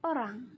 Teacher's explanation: o bunyi belakangnya itu sedang bulat